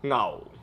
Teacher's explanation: Then we have tone 4 in Cantonese, which is just going down.